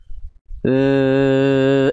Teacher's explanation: huruf dzal itu dia dari segi suara punya sifat namanya adalah rokhawah. Rokhawah itu artinya adalah mengalir suara.